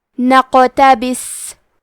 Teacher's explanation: کلمت نقتبس میں حرف القاف پہ جزم ہے، یہاں قاف کا حکم ہے قلقلہ تو ہم یہ حرف کو ہلاتے ہوئے یہ کلمہ کو پڑھیں گے، کیونکہ آخر میں سین ساکن ہے تو ہمیں سین کو ہمزے سے پڑھنا ہے اور جزم کو ظاہر کریں گے۔